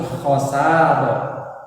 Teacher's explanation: Jangan dibaca khosaron karena di sini di akhir kalimat waqaf berhenti, jadi disebut mad iwad, dibacanya 2 harokat. Karena ro berharokat fathah tanwin dan diwaqaf, intinya diwaqaf berhenti bacanya, berarti langsung khosaro.